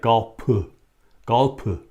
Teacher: they don't pronounce the F sound in Korea. In the Hangul, instead they use a P sound.